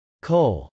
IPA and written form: kˈoʊl (coal)